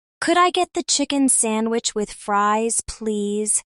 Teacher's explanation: The could I becomes coulda or could I with light linking.